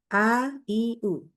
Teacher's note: membaca huruf ain yang a, i, u dibaca dengan mendekati atau dari makhraj huruf hamzah.